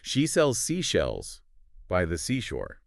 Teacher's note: you're creating this hissing sound by forcing air through a narrow space in your mouth